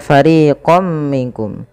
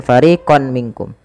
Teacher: Dan kemudian ketika fariqom minkum ini tidak dibaca dengan fariqon minkum tapi suara tanwinnya awalnya fariqon ketemu mim masukkan fariqom ya sembari kita tahan suara mimnya dan inilah yang dinamakan dengan idgham